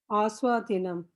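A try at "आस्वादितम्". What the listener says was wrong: Dinam. Where is dinam? Aswaditam. Aswaditam.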